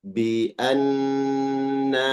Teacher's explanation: di situ ada alif mad, dipanjangkan di na